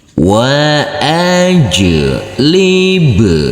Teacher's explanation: Wa huruf jim yang bersukun ini harus kita pantulkan karena ini adalah bacaan qalqalah. Wa ajlib, huruf ba juga harus kita pantulkan karena ini adalah bacaan qalqalah juga